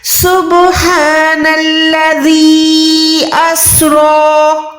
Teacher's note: آپ نے آواز کو 2 سیکنڈ کھینچنا ہے، کیونکہ یہاں پر چھوٹی مد ہے۔ مد 2 قسم کی ہم نے سیکھی ہوئی ہے، ایک بڑی مد ہوتی ہے وہ 4 سیکنڈ کھینچتے ہیں، چھوٹی مد کو ہم 2 سیکنڈ کھینچتے ہیں۔